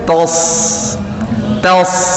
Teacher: Ta, lalu shadnya tebal. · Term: huruf shad